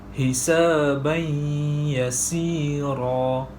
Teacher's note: Tanwin bertemu dengan huruf ya dan cara bacaannya ialah memasukkan tanwin ke dalam huruf ya beserta dengung 2 harakat.